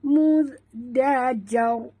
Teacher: ra itu mati, kita matikan dia kerana kita berhenti, maka dibaca tebal